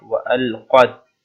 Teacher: qaf here is one of the bold letters. That's why you have to make it bold or read with the full mouth, like وألقت.